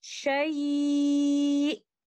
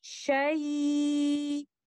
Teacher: letter hamza is missing. And the listener is unable to listen to letter hamza.